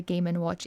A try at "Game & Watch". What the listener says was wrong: That sounds a lot like you're saying gaming watch. Right, game and watch. it's not a gaming watch.